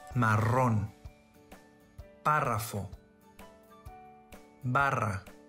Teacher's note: Double R, thrilled or rolled R.